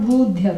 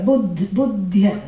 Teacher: So that's because there is a short vowel followed by a conjunct consonant. So there is a doubling.